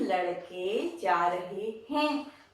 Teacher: लड़के जा रहे हैं तब हम अनुनासिक का उच्चारण भी करते हैं